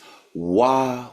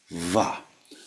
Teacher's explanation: try to say it very softly with the teeth just sort of vibrating on the lips.